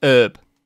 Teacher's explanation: hearing americans drop the h on the word herb can often feel weird